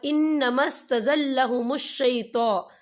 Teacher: یا نون مشدد ہے تو یہاں پہ غنہ ہوگا